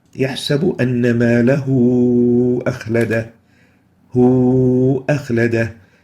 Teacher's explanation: So the dhamma on the ha here would be replaced with a waw vowel, and it will be extended as if there is a waw there. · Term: greater connecting mad